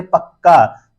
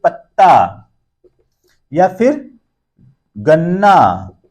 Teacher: जो ध्वनि है जब ये द्वित हो रही है तो उसके पहले वाला जो वर्ण है वो क्या हो रहा है? वो ह्रस्व हो जा रहा है, दीर्घ नहीं हो रहा है।